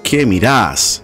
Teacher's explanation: In places such as Mexico, you would ask, ¿qué miras? Argentinian Spanish, on the other hand, they emphasize the second syllable of miras.